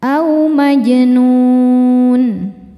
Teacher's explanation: Mad tabi'inya waw sukun yang didahului dhammah, huruf yang disukunkannya huruf nun. Maka nunnya panjang, boleh 2 atau 4 atau 6 harokat asal konsisten dalam sekali baca. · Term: mad arid li sukun